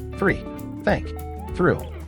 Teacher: Unvoiced th, only breath, no vibration.